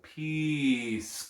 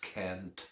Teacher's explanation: a very long vowel sound compared to a very short vowel sound